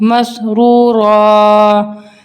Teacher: ज़बर की तनवीन पर जब वक्फ होगा तो वहाँ अलिफ पढ़ा जाएगा बशर्तिया कि वो कोल ता ना हो, यानी कि यहाँ पे अब ये 2 ज़बर है, इसको हम 1 ज़बर पढ़ेंगे 1 अलिफ के बराबर, यानी कि यहाँ पे ताए मुदव्वरा ना हो।